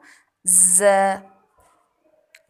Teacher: زبان کی نوک کو اوپر نیچے کے 2 یعنی کہ سامنے کے 4 دانتوں کے کنارے سے مضبوطی سے لگاتے ہوئے باریک آواز میں سی ٹی والا ساؤنڈ ویسل ساؤنڈ کریٹ ہوگا ز. بہت سے لوگ اسے ج پڑھتے ہیں، تو that is gonna be wrong.